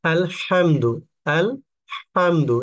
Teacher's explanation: হা হলকের মধ্যখান থেকে উচ্চারণ হবে